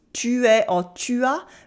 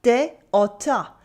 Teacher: The vowels in small words, like pronouns tu es or tu as, become t'es or ta.